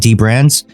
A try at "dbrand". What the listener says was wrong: We've later learned that it's not pronounced D Brand. It's called The Brand.